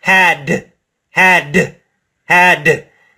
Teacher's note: Feel the vibration for that final D.